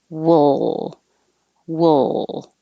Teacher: different vowel the vowel is uh like took wool so wool you could even think of it as just moving from a w to an l and making the l noise